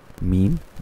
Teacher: আচ্ছা, আমরা যদি হরফে হরফে মাখরাজগুলো আমরা পড়ি, তাহলে আমাদের উচ্চারণগুলো এরকম হবে, যেমন মিম দুই ঠোঁট থেকে মিম